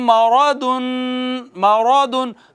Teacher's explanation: را کے اوپر زبر ہے تو را موٹی پڑی جائے گی، نون تنوین آ گئی، نون تنوین کے بعد فا ہے، فا حروف اخفا میں سے ہے تو یہاں پر اخفا کریں گے، مارادن، صحیح ہے۔